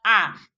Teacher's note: इसके उच्चारण में इन एक मात्रिक के तुलना में दुगना समय लगेगा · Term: द्विमात्रिक